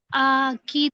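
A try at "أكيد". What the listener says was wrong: نہیں نہیں نہیں، آ کی تو نہیں. دیکھیے حمزہ پہ کیا ہے، الف پہ کیا ہے، زبر، حرکات. جلدی پڑھنا.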